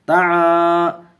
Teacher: طا زبر طا، عین الف زبر ع، الف مد ایک الف کھینچیں گے